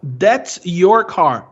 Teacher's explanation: Nem mudei, eu fiz afirmativa com uma entonação de pergunta.